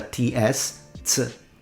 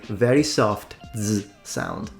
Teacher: the pronunciation of the Z, which in Italian can be pronounced either as a ts, ts, or as a very soft z sound